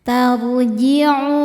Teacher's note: Ro sukun dibaca tafkhim karena didahului fathah, maka ro-nya dibaca tebal. Tarji'u. Mad tabi'i dhahiri karena ada waw sukun sebelumnya dhammah.